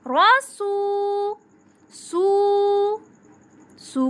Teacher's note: محمد، محمد۔ رسو، رسو، را کے اوپر زبر آ گئی اس لیے ہم را کو پر پڑھیں گے، پر موٹا